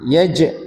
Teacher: pada kalimat yaj ini ada qalqala ya dipantulkan ya